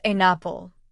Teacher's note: with the N sound joining to the vowel